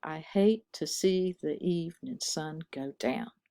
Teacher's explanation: the stress is always on the second syllable in each foot. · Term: iambic pentameter